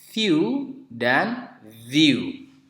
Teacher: Jadi bergetar pita suara kita ketika mengucapkan bunyi v.